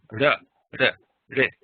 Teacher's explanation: flap your tongue against that little alveolar ridge behind the top row of front teeth